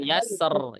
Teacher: Yasser itu ketebelan. Turun ke bawah suaranya.